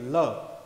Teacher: जैसे ल हम बोल रहे हैं तो साइड से, जीभ की साइड से, पार्श्व भाग से हवा बाहर आ रही है, इसलिए इसको बोला जाता है पार्श्व व्यंजन।